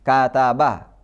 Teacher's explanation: Sebenarnya kataba, ini kan sama-sama fathah. Maka pengucapan fathah di huruf ba, di huruf kaf, dan di huruf ta itu sama-sama durasinya